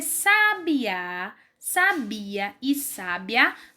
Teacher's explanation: sabiá sabia e sabe a não são a mesma coisa mas a gente só consegue diferenciar pela intensidade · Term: sílaba tônica